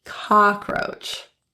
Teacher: the first o in cockroach is actually pronounced with an a open relaxed lip position